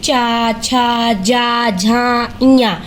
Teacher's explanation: च वर्ग में च ञ ये तालु की सहायता से बोले जाते हैं।